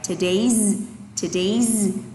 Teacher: thờ đi xuống, day đi lên nè